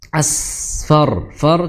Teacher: R-nya tebal karena fa itu berharakat fathah ketika mau disukunkan jadi ro tebal.